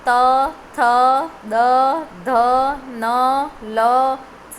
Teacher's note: દંત એટલે કે તમારું જે દાંત છે, જીભ છે ને, એ દાંતને અડી જાય,